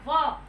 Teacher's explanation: जो हमारे दांत हैं वो हमारे होठों को टच करते हैं, तो इसलिए वह का उच्चारण स्थान दांत और होठ होता है। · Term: दंतोष्ठौ